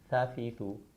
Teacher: ज़ुबान की नोक जब ऊपर के दांतों के किनारे से लगे तो ता अदा होता है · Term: लिस्विया